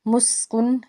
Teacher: سین جو ہے حرف صفیریہ کا حرف ہے، سیٹی کی آواز آئے گی۔ کن میں نون ساکن کے بعد حمزہ ہے تو یہاں پہ ہم نے اظہار کرنا ہے، یعنی کہ ہم نے غنہ نہیں کرنا۔